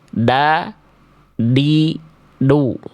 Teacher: Ke langit-langit bukan ke pangkal gigi atas bukan ke gusi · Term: huruf D